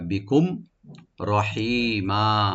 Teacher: কুম মিম সাকিন এখানে এজাহার করব, এজাহার সফবি